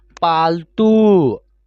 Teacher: त में जो बड़ी ऊ की मात्रा का प्रयोग हुआ है तो उसको हम लोग खींच कर पढ़ रहे हैं